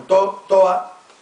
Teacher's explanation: merece la pérdida de la D intervocálica